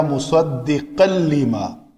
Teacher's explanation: تنوین کے بعد لام آیا ہے تو یہ مصدقن کی نون مکمل ختم ہو جائے گی، لام پڑا جائے گا